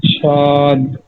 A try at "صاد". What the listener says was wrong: সদ হবে না, সিনের উচ্চারণ থেকে মোটা হবে, সদ, স স,